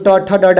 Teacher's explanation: जो ट ठ ड ड है इसको मूर्धा के आधार पर किया गया है। तो इसको मूर्धा व्यंजन बोलते हैं।